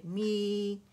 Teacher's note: می کے لیے جبڑا نیچے لے کے جائیں، می، تاکہ آپ کی آواز جو ہے نا الخشوم میں ناک میں نہ جائے